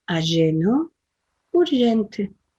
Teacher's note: La J la decimos como una SH suave en castellano.